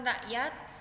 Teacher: Pada kata rakyat tersebut, kesalahan penghilangan fonem konsonan K pada tengah kata